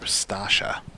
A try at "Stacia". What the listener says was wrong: Stacia. Like Stacy, but then with a sh. No, you're going sta. You're doing sta. Stay.